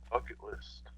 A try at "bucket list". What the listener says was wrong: You really gotta pronounce that B, man, because it sounds like you said F.